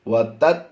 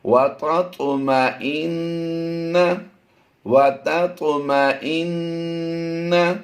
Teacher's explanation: اس میں ہم نے طا پر قلقلہ بھی کرنا ہے اور اسے پر بھی پڑھنا ہے۔ وَتَطُ، وَتَت نہیں کریں گے، تا طا زبر تت نہیں، یہ تا کی آواز بن جائے گی، نہیں ہم نے طا پڑھنا ہے۔